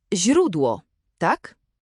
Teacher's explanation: zi, miękkie, jest bardzo delikatne. Język musi być przy podniebieniu.